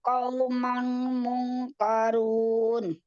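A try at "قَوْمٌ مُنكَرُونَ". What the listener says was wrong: Oh, qaumun bukan kaumang tapi qaumum munkarun. Dakhalu alaihi faqalu salaman qala salam qaumun munkarun.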